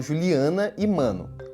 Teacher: eu que sou carioca por exemplo falo Juliana e mano com ar saindo pelo nariz